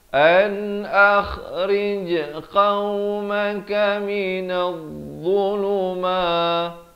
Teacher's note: Qaf ini makhrajnya di pangkal lidah.